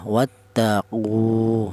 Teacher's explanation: Berhubung ada wawunya mati ya, berfungsi sebagai mad tabi'i atau berfungsi untuk memanjangkan bacaan, maka qu ini dipanjangkan dua harokat. Wattaqu, seperti itu.